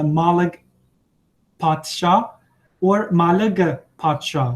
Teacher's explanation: in some regions the marker is just a schwa which can be dropped in many cases